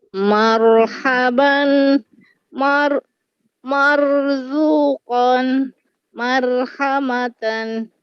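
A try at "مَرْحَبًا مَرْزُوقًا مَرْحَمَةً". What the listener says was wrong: Cantik.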